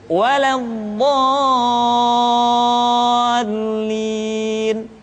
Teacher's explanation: Dha dibaca panjang, suaranya tidak diayunkan karena setelah tanda panjang diikuti oleh huruf yang bertasydid.